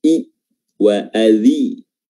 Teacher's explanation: harokat kasrah dari huruf dzal diperjelas dengan menyinyirkan bibir ke belakang